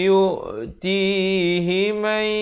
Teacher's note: Di sini idgham bi gunnah masuk beserta dengung 2 harakat.